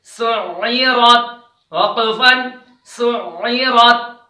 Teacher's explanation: سین عین پیش، سعین زیر عی، سعی. را تا زبر، را پر زبر ہے اس وجہ سے را موٹی پڑی جائے گی. سعیرت وقفن سعیرت، کیونکہ تا پہلے سے ہی ساکن تھا، وہ وقف کی حالت میں بھی وہ ایسا ہی پڑھا جائے گا جیسا کہ پہلے تھا.